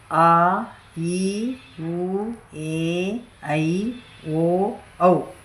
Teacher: ಈ ಅಕ್ಷರಗಳು ದೀರ್ಘ ಸ್ವರಗಳು ಇವು ಎರಡು ಮಾತ್ರೆಯಲ್ಲಿ ಬಳಸುವ ಅಕ್ಷರಗಳು